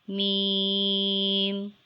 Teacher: dotless mem is a light and nasle and long sound letter it is pronounced by joining the dry parts of both lips